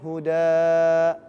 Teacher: Sekarang dia kalau ada fathah ta'in, maka dibacanya fathah panjang. Hudan, wakofnya huda.